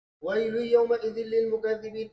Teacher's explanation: وَيْلٌ يَوْمَئِذٍ لِّلْمُكَذِّبِينَ، اس میں بھی ادغام تام ہے اور یہ خلف کے لیے ہے. نون ساکن یا تنوین کے بعد واو اور یا آنے کی صورت میں خلف ادغام تام کرتے ہیں، غنہ نہیں کرتے ہیں.